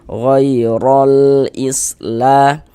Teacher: Huruf ro memiliki harakat fathah ya, tanda baca fathah. Maka ini huruf ro dibaca tabkhim, dibaca tebal. Sehingga dengan menaikkan pangkal lidah kita ketika kita mengucapkannya.